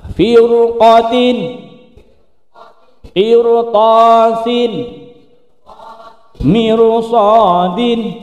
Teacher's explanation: Ro yang sukun didahului kasroh yang bertemu huruf isti'la yang harusnya dibaca tipis maka menjadi tebal.